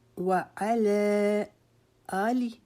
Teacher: آ کو لمبا کریں گے کیونکہ اس کے اوپر حمزہ کے اوپر کھڑا زبر ہے، اور لی کو نہیں کھینچیں گے. آلی نہیں پڑھیں گے، وہ آلی، اور اس کو آلے نہیں پڑھیں گے.